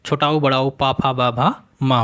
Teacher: हम जानते हैं ओष्ठ वर्ण छोटा ऊ, बड़ा ऊ, पा फा बा भा माँ होते हैं